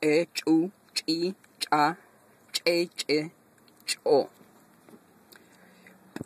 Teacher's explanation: Este che tiene una explosión